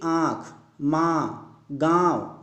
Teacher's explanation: सही उत्तर है आपका नाक और मुंह से। अनुनासिक स्वरों का उच्चारण मुंह से अधिक, नाक से बहुत कम सांस निकलती है।